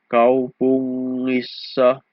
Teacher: the NG is a single sound doubled